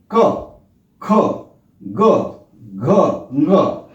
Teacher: तो देखें, क, ख, ग, घ, ङ, यानी 5 के 5 एक ही स्थल से उच्चारित होते हैं। कंठ से जो स्वर निकलता है, कंठ से आवाज आती है और जीभ का जो निकला अगला हिस्सा है वो थोड़ा सा स्पर्श करता है